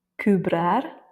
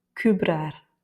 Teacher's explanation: comme ce n'est pas le E qui est tonique, il va avoir moins d'importance et donc on le met dans le nez